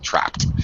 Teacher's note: ed makes a t sound after the voiceless p